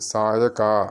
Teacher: പഞ്ച, അത് ശ്രദ്ധിക്കണം, ഞായും ചായുമാണ്. പിന്നെ സായക, കായാണ് ഗ എന്നായി പോകരുത്